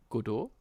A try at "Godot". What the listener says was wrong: Godot. It's Godot. like don't say the first O. You do Godot, like good day. Godot.